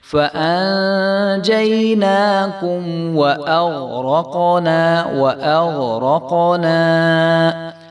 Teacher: واو باریک حرف ہے اور حمزہ بھی جو ہے وہ باریک ہے، آگے غین، را اور قاف جو ہے وہ موٹے حرف ہیں، اور قاف کے اوپر قلقلہ بھی ہو رہا ہے